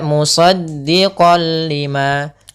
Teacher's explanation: Karena dia bertemu dengan huruf lam yang mana lam termasuk huruf idgham bila gunnah, maka ini kita namakan hukum tajwidnya idgham bila gunnah, yaitu suara nun dan tanwinnya hilang langsung dipindahkan ke lam.